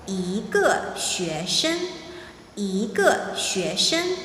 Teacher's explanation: if E is followed by a word, a syllable that's pronounced the fourth tone, then E changes its tone to the second tone.